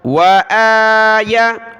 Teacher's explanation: حمزہ کے اوپر کھڑا زبر ہے تو اس کو کھینچنا ہے، ایک الف کی مقدار، یا کو نہیں کھینچنا۔ بہت سارے پڑھ لیتے ہیں وآیا، یا کو آپ نہ کھینچیں، یا پر صرف زبر ہے، یا زبر یا، واو زبر وا، حمزہ کھڑا زبر آ، یا زبر یا۔